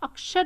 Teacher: आप अक्षर को देखिए, अक्षर जो है क अक्षर, च की आवाज आ रही है, क प्लस श की आवाज आ रही है अक्षर में। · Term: संयुक्त व्यंजन